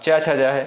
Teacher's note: च, छ, ज ये आपका किससे होगा? तालु से होगा।